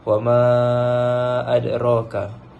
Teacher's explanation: bertemu dengan huruf hamzah dalam dua kalimah jadi cara bacaan dia adalah empat atau lima harakat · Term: Mad Jaiz munfasil